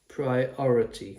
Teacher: The I here, the second I is the schwa, the priority.